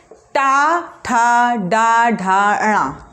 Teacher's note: टा किससे कहाँ जीभ लग रही है आपकी? मूर्धा पे।